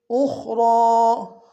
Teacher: خا کو موٹا ادا کریں گے، را کے اوپر کھڑا زبر ہے، 1 دار میں کھینچیں گے